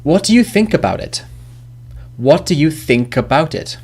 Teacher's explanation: the think and about those words get linked together because think was the last sound the last sound is cut · first sound is a which is of course a vowel so the last consonant as in think links to the vowel